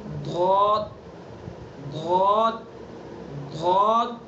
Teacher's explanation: बस हमें एहतियात ये करनी है कि ज़बान का जो अगला हिस्सा है इसको हमें कहीं टच नहीं होने देना है, बस साइडें लगानी है, करवटें लगानी है, करवटें। और जो पिछला हिस्सा है ज़बान का, इसको पुर करने के लिए ऊपर चिमटाएंगे तालू के ऊपर ताकि पुर हो जाए मुंह भर के